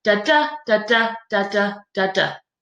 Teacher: a line of poetry with four bits of one unstressed syllable followed by one stressed syllable